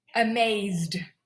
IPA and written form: əˈmeɪzd (amazed)